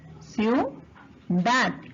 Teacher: En la palabra ciudad también tenemos dos vocales cerradas que forman dictongo. Como forma dictongo, estas se van a mantener unidas.